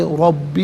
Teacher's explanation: ربی کا را پر زبر، را کو پر کر کے پڑھیں گے